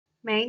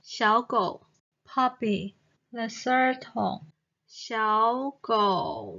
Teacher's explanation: of " well " it sounds down first and then up the pitch of the third tone slightly goes down and then goes up